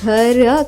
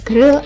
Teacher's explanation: వీటి మధ్య ఎలాంటి ఓవెల్ లేదు, కాబట్టి జిఆర్ యొక్క శబ్దం ఘర్ కాకుండా గ్ర అవుతుంది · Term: సంయుక్తాక్షరం